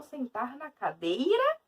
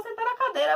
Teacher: Ó o I sumindo, porque ele é o som mais fraco. Numa sílaba, o som central é a vogal.